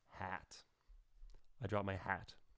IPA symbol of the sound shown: æ